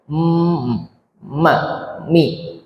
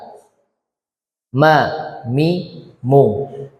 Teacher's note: 2 bibir yang dipertemukan, dirapatkan, maka akan keluar mim.